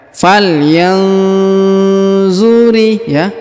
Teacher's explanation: nun sukun bertemu zo atau zu, maka kita dengungkan dan kita samarkan